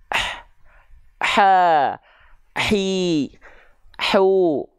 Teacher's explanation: jadi hak kecil itu dilafalkan tepat dari bagian tengah tenggorokan kita dengan karakteristik nafas yang berbisik